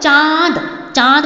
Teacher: मेरा नाक भी प्रयोग हो रहा है और मुंह का भी प्रयोग हो रहा है। मेरा मुंह जो है चांद बोलने से खुल रहा है और जो आवाज़ आ रही है वो कहाँ से आ रही है? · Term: अनुनासिक